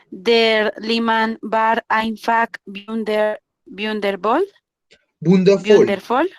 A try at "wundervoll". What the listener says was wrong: Wundervoll. Mira que no tiene umlaut. No tiene, la U no tiene umlaut.